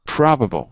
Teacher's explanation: So the stress would be on the first syllable, pra, ah. And it's an ah sound, so it would be number 9 in the chart.